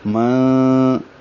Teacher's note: نون ساکن کے بعد ذال آنے کی وجہ سے اخفا ہوا ہے، نون کی آواز چھپائیں گے